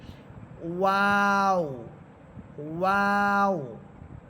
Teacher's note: দেখেন ওয়াও হরফটা ঠোঁট একেবারে গোল করে প্রথমে শুরু করবেন, ঠোঁট গোল করে, গোল করার পর দুই ঠোঁটের মাঝখানে যে শূন্য জায়গা থাকবে ওই শূন্য জায়গা থেকে আওয়াজ শুরু হবে, ওয়াও। প্রথমে গোল, ঠোঁট গোল হবে, এরপর ঠোঁট একটু ছড়াবেন, আবার শেষে এসে ঠোঁট গোল করে ফেলবেন